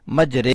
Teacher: یہاں کھڑی زیر کو ادا کرتے ہوئے ای کی آواز نہیں نکالنی بلکہ اے کی